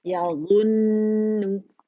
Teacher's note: फिर हमने क्या करना है कि उसको दम्मा देना है ताकि वो गोल हो जाए, और फिर हमारे पास हर्फ गुन्ना मुशद्दद नून है, तो अकमल ग्रेड का यहाँ पे हमारे पास द मोस्ट कंप्लीट लॉन्गेस्ट गुन्ना जिसे कहते हैं वो होगा